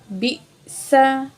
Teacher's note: हमज़ा साकिन है, झटके के साथ पढ़ेंगे, सीन में सीटी वाली आवाज़ होगी।